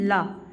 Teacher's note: निश्वास के समय जिह्वा के बगल से निकलने वाली जो व्यंजन ध्वनि होती है उसे क्या कहेंगे? पार्श्विक व्यंजन